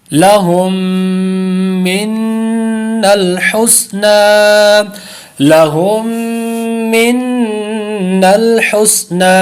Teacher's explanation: پہلا غنہ ادغام شفوی کا اور دوسرا جو غنہ ہے نون مشدد کا، دو غنے کر کے پڑھیں گے